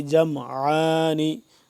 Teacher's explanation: عین کو حلق کے درمیانی حصے سے کھچاؤ پیدا کر کے